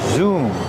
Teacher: we see the verb zoom with a double O pronounced with a long ooh sound like room and moon.